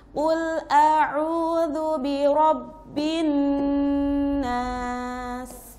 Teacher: Nah, sinnya harus berdesis ya, terasa tuh sifatnya. Terus bin ada hunahnya, dua ketukan tapi semacam seperti tiga ya.